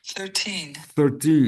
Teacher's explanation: O apóstrofo indica o acento tônico, acento, a sílaba tônica. Então, a sílaba tônica na segunda, né?